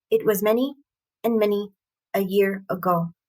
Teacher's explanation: in an anapestic meter um and it's a triangle which is a trimeter of unstressed unstressed stressed syllable which gives a very kind of relaxed feel to it